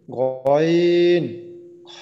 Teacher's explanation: 3 নম্বর মাখরাজ হলকের শেষ হইতে